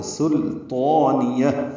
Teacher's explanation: سلطانیہ اس میں غلطی ہوتی ہے، لوگ لام کو موٹا کر دیتے ہیں کیونکہ آگے طا حروف مستعلیہ میں سے ہے تو وہ پر ہے، تو اس سے پہلے سین ہے، سین لام باریک ہے، طا پر ہے. سلطانیہ، طا کو پر کرنا ہے، لام کو پر نہیں کرنا، سین کو بھی موٹا نہیں پڑھنا. نون کو جلدی ادا کریں گے، یا کو ہا سے ملا دیں گے، ہا ساکن پہ ہمس ہوگا.